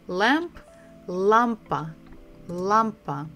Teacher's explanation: We stress the first syllable, la, lampa